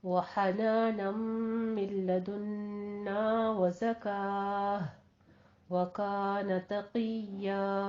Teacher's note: हनानम में इदगाम अल गुन्ना करना है, 2 काउंट करने हैं।